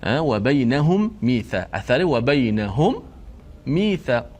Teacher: Cara bacaan adalah wajib kita mengidghamkan huruf mim yang mati yang pertama tu ke dalam mim yang kedua yang berbaris dengan sempurna, masuk sempurna, berserta kita panjangkan gunnah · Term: idgham mithlain